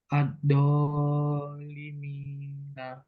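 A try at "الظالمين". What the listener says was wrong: nah, ini dua harokat aja. Al-Zalimina. Zo ya. Jadi ujung lidahnya digigit. Sampai keluar dari giginya. Al-Zalimina. Nah, nanti belajar mat ya. Biar tidak terlalu panjang.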